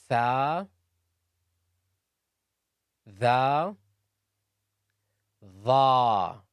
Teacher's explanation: The is also a heavy letter and is pronounced from the tip of the tongue and the edge of the upper incisors